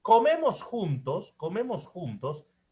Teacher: comemos juntos es descendente